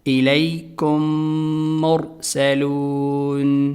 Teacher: پہلے ساکن میم کو دوسرے میم میں ادغام کر دیتے ہیں، یعنی کہ ملا دیتے ہیں، اور اس کو نام دیا گیا ہے ادغام شفوی۔